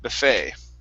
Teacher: the stress is on the end and the e t is more of an a sound this is a french word buffet okay instead of awesome okay